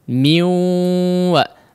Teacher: Nah, di sini diidghamkan juga, tapi tidak disebut idgham yang sempurna dikarenakan masih membawa sifat ghunnah pada huruf nunnya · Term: idgham naqis